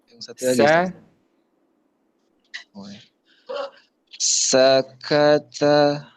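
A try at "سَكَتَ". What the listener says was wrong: Sakata. Lagi lebih rileks lagi bacanya, lebih lunak lagi ya, nggak kaku, nggak tegang. Sakata. Lagi lebih rileks. Sakata. Biasa saja. Nah, biasa saja Pak. Gitu kan relax tuh. Enggak berat banget bacanya. Huruf kaf itu dekat dia dengan huruf K dalam bahasa Indonesia.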